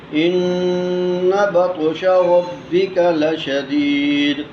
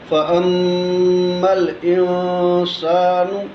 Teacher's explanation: اسی طرح فاما الانسان، یہاں پہ میم مشدد ہے، تو نون مشدد اور میم مشدد پہ ہم غنہ کریں گے ایک الف کے برابر۔ اپنی زبان کو تالو کے ساتھ لگانا ہے تو اس سے غنہ ادا ہو جائے گا۔